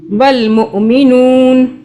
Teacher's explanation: नून ज़बर ना, रुकेंगे तो नून को साकिन कर देंगे।